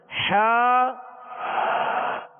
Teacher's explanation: حا وسط حلق سے، درمیان حلق سے